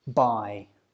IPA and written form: baɪ (buy)